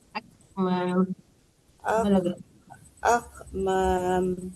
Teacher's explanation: Jangan akmam, ada hamasnya sedikit ya. Akmam, ada nafas keluar dari tenggorokan.